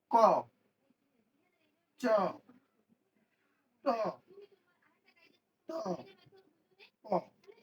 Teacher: এটা আমাদের উচ্চারণ করলে মুখ থেকে বাতাস অল্প বের হয়। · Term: অল্প প্রাণ